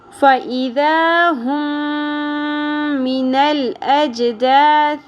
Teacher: تو یہاں پر ادغام شفوی ہوگا، یعنی دونوں میم کو ہم نے ملا دینا ہے غنہ کے ساتھ